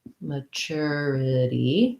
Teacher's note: the m-a and this word doesn't say a sound like an a it says the schwa · We're coming back to our ity, our itty ending with the flap, right? The tu in this word sounds like a cher, like a chur. · The tu in this word sounds like a cher, like a chur. And then we have second syllable stress. So the ma in this word doesn't say a sound like an a, it says the schwa.